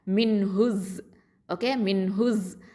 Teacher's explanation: இப்போது இதில் பாருங்கள், ஹ தொம்மா ஜ ஷத்தாவோட இணையும். நடுவில் இருக்கக்கூடிய அல் அப்படிங்கிற அந்த ஹம்சத்துல் வசலையும் லாமையும் உச்சரிக்க மாட்டோம்.